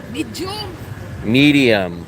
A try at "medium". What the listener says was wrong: There's no J in medium.